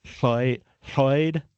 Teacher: And then LL like like we begin with Lloyd is a distinct lateral sound created by placing the tongue behind the top teeth and blowing air out the sides